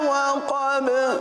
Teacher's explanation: وقب با پر قلقلہ ادا کیا جائے گا